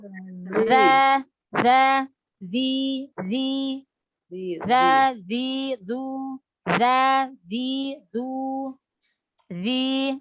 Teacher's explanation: ujung lidah bertemu dengan ujung gigi seri atas. Jadi lidahnya keluar sedikit ibu. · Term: huruf za